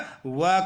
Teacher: जब हम वह का उच्चारण करते हैं तो हमारी जीवा दांतों में लगती है और होठ भी कुछ मुड़ते हैं। दांतों और होठ का सम्मिलित उपयोग से वह का उच्चारण होता है, इसलिए इसका उच्चारण स्थान दंतोष्ठ है और वह को दंतोष्ठ वर्ण कहते हैं।